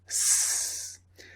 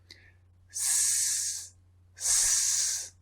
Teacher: You cannot feel any vibration from your throat. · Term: S sound